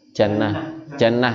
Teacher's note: kalau kita tak marbutoh itu disukun kalau dibaca dalam ilmu tajwid ya jadi dia nanti dibacanya itu kayak huruf H